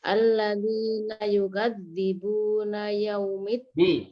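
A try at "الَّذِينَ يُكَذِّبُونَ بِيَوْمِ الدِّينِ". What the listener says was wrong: B-nya mana? B-nya enggak muncul. Nah, yukadzibuna biyaumiddin. Ya, B-nya jangan ketinggalan.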